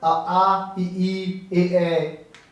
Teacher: अवृत्त आ ई ए। ओठ का कोई प्रयोग नहीं, ओठ फैल गए।